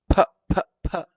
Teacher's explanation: the letter R is that you can't see how it's made with the letter P you can see lips closing and then opening quickly with a small puff of air